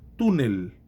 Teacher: A tônica está na penúltima, não na última. Então, é uma palavra grave não terminada em N, S ou vogal, portanto, é acentuada.